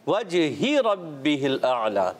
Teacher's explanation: वजही इसको हा की ज़ेर को लंबा नहीं करेंगे